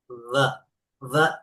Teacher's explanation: এটা উপরের দাঁতের আগা নিচের ঠোঁটের ভিজে অংশ।